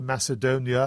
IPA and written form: ˌmæsɪˈdoʊniə (Macedonia)